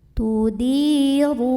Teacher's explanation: ra-nya dibaca secara tafkhim karena ra berbaris dan kita lihat barisnya dhammah ya, maka bacanya tebal.